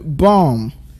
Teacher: the first B there is pronounced, but the second one isn't. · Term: silent